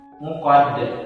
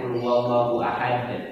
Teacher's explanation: Qad, dal yang terakhir itu berarti qalqalah. Bacanya harus dipantulkan.